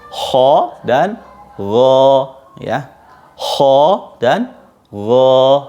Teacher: Ini cara pelafalannya itu lidah bagian belakang itu juga agak diangkat karena dia isti'la